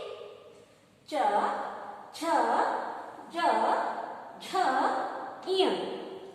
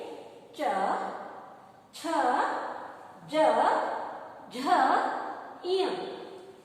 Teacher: इसका उच्चारण स्थान है तालु।